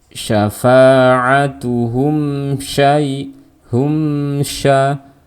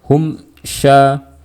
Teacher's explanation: Kalau kita melafalkan tanpa gunnah, maka kita akan mengecualikan sifat gunnah dari huruf mim. Maka lafalkan izhar syafawi dengan gunnah yang sedikit atau pendek, tidak perlu dipanjangin. Jadi dihilangkan salah dan dipanjangin pun juga salah.